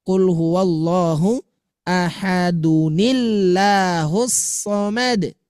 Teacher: ketika tanwin bertemu dengan hamzah wasal, munculkan nun seperti pahlawan untuk menggantikan posisi tanwin tetapi tidak menghilangkan jati diri dari tanwin itu sendiri.